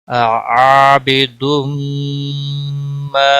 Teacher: یہاں میم آیا ہے اس لیے ادغام با گنہ ہوگا. عابدم ما الف مدہ ہے 1 الف کے برابر ما کو کھینچنا ہے